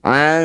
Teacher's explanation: Mad tabi'i bertemu huruf hidup kemudian dihentikan, jadilah bacaan namanya mad arid disukun. Su panjangkan dulu 6 harokat, huruf terakhir sukunkan. Ansu'in saat berhenti, ansu'.